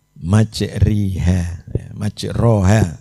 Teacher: mencondongkan Alif mendekati kepada ya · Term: imalah